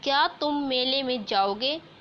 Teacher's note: इस वाक्य में जाओगे का उच्चारण कुछ उच्च स्वर में होता है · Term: संगीतात्मक स्वराघात